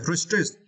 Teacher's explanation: we need to stress the second syllable. Strict, okay, restrict.